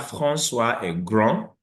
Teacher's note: We have François est grand, the D is not pronounced.